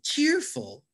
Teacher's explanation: we have two syllables and in this one we emphasize the first syllable cheerful this is a stronger syllable when you say it cheerful